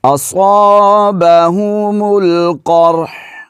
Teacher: ہا کو آخر میں ہلانا نہیں ہے، پڑھنا ضرور ہے لیکن ہلانا نہیں ہے